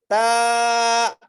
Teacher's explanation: ता, तो ता के बारे में समझ लीजिए कि ता बारीक पढ़ी जाती है और जबान की नोक को ऊपर के दोनों दांतों की जड़ में लगाने से ता अदा होता है।